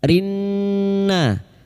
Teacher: rinna kita denggungkan selama 3 harokat nunnya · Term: idgham syamsiyah